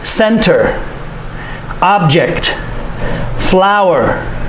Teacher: For the noun and the verb. For the noun, the stress is on the first syllable.